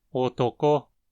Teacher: O acento está na mora final, ko, que precisa ter uma frequência alta.